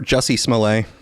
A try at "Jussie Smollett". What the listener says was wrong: I believe his name is Juicy, not Jesse.